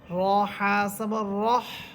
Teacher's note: এখানে র হরফ এটা মোটা হবে, কারণ র হরফের উপরে আছে জবর। এরপর র আবার হাকে গিয়ে ধরবে, এটা হচ্ছে জিমের মতো হা।